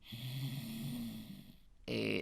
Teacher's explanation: un ejemplo de una consonante faríngea, específicamente faríngea fricativa sorda